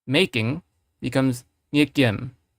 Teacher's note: the way I'm saying it, making, this K here is unaspirated. So you have to understand that when you say this here, it's also unaspirated.